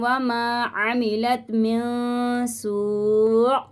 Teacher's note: یہاں پہ حمزہ کو ساکن کر دیں گے اور جھٹکا دے کے پڑھیں گے